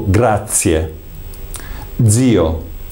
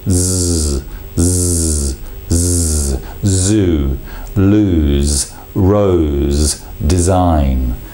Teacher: So it's a continuous, almost massaging of the blade against the alveolar ridge, that position there. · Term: fricative sound